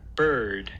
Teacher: the post alveolar constriction comes in the form of a retroflex articulation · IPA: [ɹ]